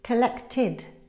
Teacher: The ed ending is pronounced id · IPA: /id/